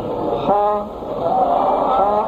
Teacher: اچھا بھائی پر حرفوں کو، یہ خا پر ہے نا، اس کو بھی نرمی کے ساتھ پر کرنا ہے، زور نہیں لگانا ہے. اگر زور سے خا نکالیں گے تو وہ ایک جیسے خراش سی کی آواز آتی ہے ایسی آئے گی، وہ بھی صحیح نہیں ہوگی.